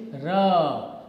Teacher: the tongue almost touches the front part of your palate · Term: approximant consonants